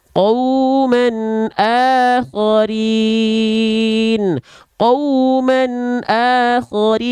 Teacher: Kalau bertemu dengan huruf 6 huruf ini tanpa ditahan, jelas tanpa ditahan, tanpa disertai dengung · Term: izhar halqi